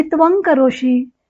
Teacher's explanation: त्वम मधील अनुस्वारापुढे क हे व्यंजन आलं, तेव्हा मागच्या अनुस्वाराऐवजी त्या क वर्गातील ङ हे व्यंजन येईल. क, ख, ग, ग, ङ. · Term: परसवर्ण